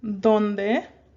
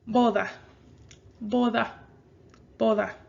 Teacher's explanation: You see how the D does sort of sound like a TH?